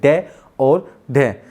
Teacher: हमारी जीभ ऊपर मूर्धन्य से टकराई और एकदम से नीचे आ जाएगी झटके के साथ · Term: उक्षिप्त व्यंजन